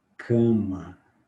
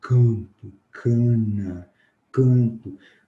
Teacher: O ar não está saindo só pela boca, sai pelo nariz também. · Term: vogais nasais